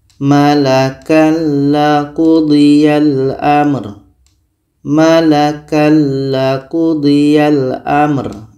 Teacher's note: La adalah huruf idgham bila gunnah. Maka tanwin ini kita masukkan ke la dan tidak boleh dengung.